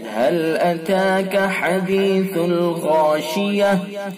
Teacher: وقف کریں گے تو تا کو گول تا کو ہائے ساکنہ سے بدل دیں گے، اس کو وقف بالابدال کہا جاتا ہے۔